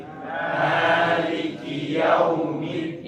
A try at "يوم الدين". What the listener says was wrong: فتح الفم. افتح الياء مفتوح. افتح شوف لما نقول مثلا لا، افتح الفم. إتمام الحركات bukan yo.